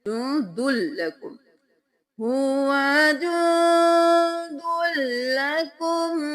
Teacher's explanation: یہاں پہ اخفا کریں گے، ناک میں آواز کو چھپائیں گے